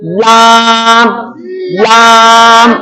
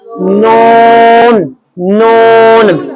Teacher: लाम के वक्त आपने जुबान जो वो दबा के ऊपर लगानी है दांतों के जड़ों के साथ, और नून के वक्त आपने दबा के नहीं लगानी, आराम से लगानी है